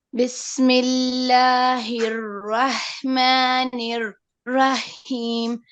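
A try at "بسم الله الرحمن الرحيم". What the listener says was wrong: Yeah, you keep repeating until you make it with fluency, but the problem now, what I hear is the ra, not the ha. Your ra is not heavy at all.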